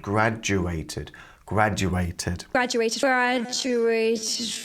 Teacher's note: the D and graduated is pronounced like a j sound